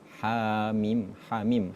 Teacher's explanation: H-nya itu dibaca dua harakat.